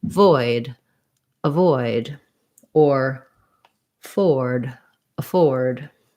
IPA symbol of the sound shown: ə